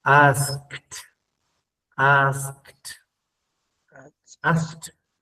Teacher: cuando una palabra que termine en ED, pero le antecede una K, va a sonar como una T, que es el segundo sonido, con una T.